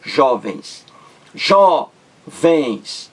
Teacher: Duas sílabas. A sílaba mais forte é a penúltima. Jó. A sílaba mais forte. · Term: paroxítona